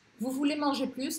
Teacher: Aqui esse plus apareceu logo antes de um ponto de interrogação. Então eu falo esse S.